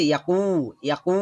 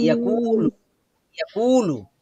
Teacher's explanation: কফটা হচ্ছে জিহ্বার গোড়া থেকে আওয়াজটা বের হয়ে আসবে, আর কাফটা হচ্ছে আর একটু উপর থেকে আসবে আওয়াজটা।